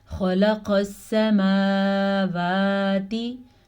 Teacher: سین کو لمبا نہیں کرنا کیونکہ سین پہ زبر ہے، جبکہ میم اور واو دونوں پہ کھڑی زبر ہے تو ان کو ہم کھینچ کے پڑھیں گے.